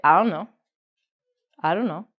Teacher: don't know so we take out the T we say Dono this is another reason why can't is confusing